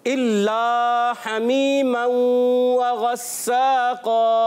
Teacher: हा की अदायगी हलक के दरमियान वाले हिस्से से करनी है · इल्ला लाम अलिफ ज़बर ला हुर्फ़े मद्दा है, एक अलिफ खींच कर पढ़ना है